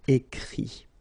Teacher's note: even if you've got this final T, you don't pronounce it, so it goes like écrit, okay.